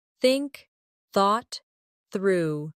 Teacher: Put your tongue between your teeth and push air out for think. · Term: th sound